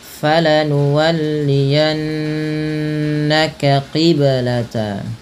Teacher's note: Kemudian pada lafal falanuwalliyannaka qiblata, pada lafal yanna, tahan bunyi suara nunnya pada lafal falanuwalliyanna karena ia termasuk bacaan gunnah dengan menahan bunyi suara n-nya atau bunyi suara nunnya sepanjang 2 harokat.